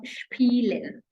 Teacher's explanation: The vowels are A, E, I, O, U, and the 3 special vowels in German. If S is followed by anything that is not a vowel, which is basically anything that is a consonant, then we pronounce it as sh.